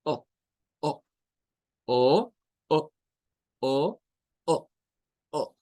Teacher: Pero esto es un sonido gutural. Es un sonido que procede de nuestra garganta, de nuestras cuerdas vocales y es un sonido que se le dice stop porque se corta, se detiene. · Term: glottal stop